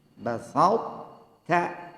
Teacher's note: Maka to-nya qalqalahnya hilang, tapi sifat itbaqnya to tetap ada.